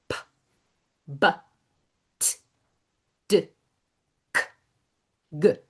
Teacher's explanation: Those are all of our stops. These are all sounds that stop. You cannot hold on to p. If you do, you're holding on to the sound after it.